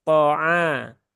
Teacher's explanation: jadi jangan sampai ikut jadi agak menebal ya, karena huruf ain kan huruf tipis, maka tipiskan saja.